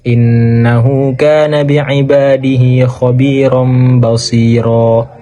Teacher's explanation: Mad iwad ini ialah mad dalam tingkah waqaf sebagai ganti dua dari fathah tanwin atau fathatain dalam tingkah waqaf, maka dibaca panjang